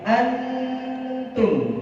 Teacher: Ketika bertemu tak, berarti membaca nun sukun makhraj pada tak, berarti antum gitu, persiapan tak.